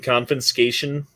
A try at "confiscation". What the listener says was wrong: Because there's no N in the middle of that word. it's confiscation, not confiscation. You're adding letters. Confiscation. It's confiscation.